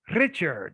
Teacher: did you know in english if you go to scotland they do trill their r's in scotland in some areas they might say richard